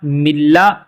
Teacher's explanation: میم زیر نون لا مل، جب ہم اس کا ہجا کریں گے تو ساتھ میں نون پڑھیں گے، لیکن جب اسے ہم روان کے ساتھ پڑھتے ہیں، رواں پڑھیں گے تو نون جو ہے وہ لام میں ادغام یعنی مدغم ہو جاتا ہے۔ نون لام میں جب مدغم ہوتا ہے تو لام مشدد پڑھا جاتا ہے، پھر نون جو ہے وہ ختم ہو جاتا ہے۔ میم زیر نون لام مل، لام زبلا، ملا، دال پیش نون دن، ملا دن، ہا پیش ہو، ملا دن ہو۔